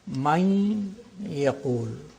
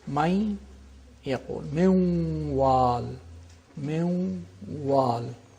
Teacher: With the nasal quality of the noon is retained, and there is idgham, which is naqis, which is incomplete idgham. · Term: partial assimilation